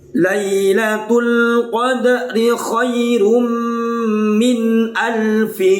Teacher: karena tanwin bertemu mim namanya Idgham Bighunnah